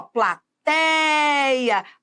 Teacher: Olha a sílaba tônica é o tei